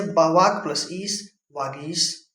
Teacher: तो का, चा, टा, ता, पा अपने ही वर्ग के तीसरे वर्ण में परिवर्तित हो जाते हैं। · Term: व्यंजन संधि